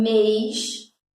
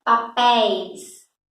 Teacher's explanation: Olha a diferença do som da vogal E. Em mês, quando tem o circunflexo, ele está fechadinho. Em papéis, e aí você abre o som da vogal.